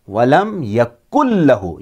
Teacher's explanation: نون اور تنوین ان دونوں کی آواز سائلنٹ رہے گی، خاموش رہے گی۔ اس وقت نون ساکن اور تنوین کو نہیں پڑھا جائے گا، اس وقت ادغام ہو جاتا ہے، یعنی ان کی آواز لام اور را میں مل کر کے گم ہو جاتی ہے۔